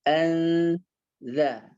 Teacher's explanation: dia hampir mau masuk huruf za, nun sukunnya dekat huruf za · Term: samarnya suara non sukun